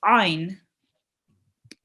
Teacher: it states that ayn should be pronounced from the middle of your throat